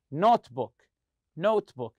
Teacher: you stress the word note